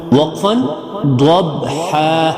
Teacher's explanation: ہا جو ہے حلق سے نکلنے والی ہا ہے